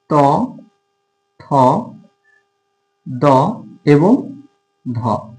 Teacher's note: দন্ত অর্থ হচ্ছে দাঁত, অর্থাৎ যে ধ্বনি উচ্চারণের সময় জিভ দাঁতের স্পর্শ পায়, অর্থাৎ জিভের ডগা দাঁতের স্পর্শ লাগে এবং যে ধ্বনিটা উচ্চারিত হয় সেটা হচ্ছে দন্ত ধ্বনি।